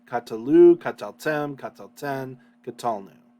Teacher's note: basically three vowels um with the accent on the final one